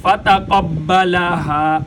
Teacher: فتقبلها ربها بقبول حسن وأنبتها نباتا حسنا وكفلها زكريا فتقبلها فا ہونٹوں سے ادا ہوتا ہے، جب اوپر والے دانتوں کو نیچے والے ہونٹوں کے ساتھ لگائیں گے تو فا ادا ہوگی۔